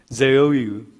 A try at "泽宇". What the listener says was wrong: 泽 Yeah, it's like it's not from the throat, it's from your mouth. like your tongue, like on the tip, on top.